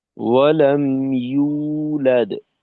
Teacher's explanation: ইউ জিহ্বার মধ্যখান থেকে আর কি উচ্চারণটা তৈরি করা